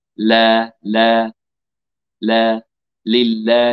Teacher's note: ينخفض جذر اللسان لترقيق اللام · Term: اللام المرققه